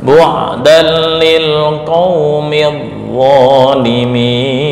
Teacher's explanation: ini tanwin bertemu lam idgham bila gunnah tanpa dengung ya, bukan bu'dal, enggak.